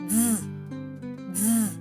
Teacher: він не простий звук бо складається із двох звуків звука д і звука з а промовляти його треба разом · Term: звук ДЗ